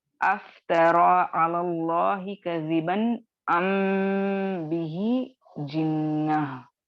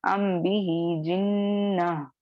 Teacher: मीम साकिन के बाद बा आए तो वहां पे लाजिमन आपको 2 काउंट्स का गुन्ना करना है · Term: इख्फाए शफवी